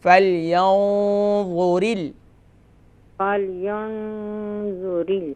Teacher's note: ہاں، یہاں پر اخفا ہوگا نا، ہیوی اخفا ہوگا، کیونکہ نون ساکن کے بعد حروف مستعلیہ میں سے وا ہے، تو یہاں پر ہیوی اخفا کریں گے